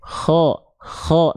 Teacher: Yang saya ambil kho itu ngorok sedikit. Tapi bukan yang terlalu ngorok, kho, enggak.